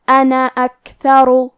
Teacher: کلمت انا کے آخری میں الف ہے لیکن ہم مد الف کو ظاہر نہیں کریں گے، حرف نون کو صرف زبر سے پڑھیں گے